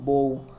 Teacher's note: না কিন্তু রয়েছে যেরকম আমরা যখন উচ্চারণ করব ব এর পরপর ব এর পরে একটা ছোট করে অ চলে আসতেছে